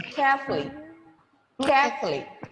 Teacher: the o sound after f is eliminated there is no ooh sound there